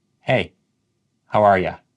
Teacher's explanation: You becomes ya.